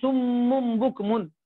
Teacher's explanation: نون ساکن اور تنوین کو میم ساکن سے بدل کر گننا کرنا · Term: قلب